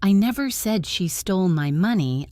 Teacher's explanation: If I say, "I never said she stole my money," I am emphasizing I. This means someone else might have said it, but I didn't. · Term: stress